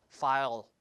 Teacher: When we pronounce dark L is more back in the mouth.